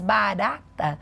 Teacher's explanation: Quando você diz barata, você sobe a língua, mas você bate a ponta. Então você tem que ensinar para a criança a bater a ponta além de subir.